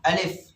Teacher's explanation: আলিফে কোনো টান হয় না, তাড়াতাড়ি পড়তে হয়।